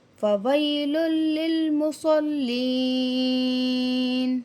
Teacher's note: جزم والی یا پیچھے زبر یا لین ہے، نرمی کے ساتھ پڑھیں گے۔